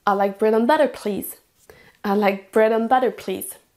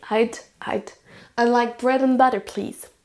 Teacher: On entend à peine ce qu'il y a au milieu. Le and va être complètement réduit.